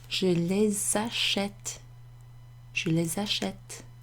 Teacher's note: I make a liaison between the S and the A